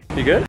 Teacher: Oftentimes, the verb to be just gets removed entirely.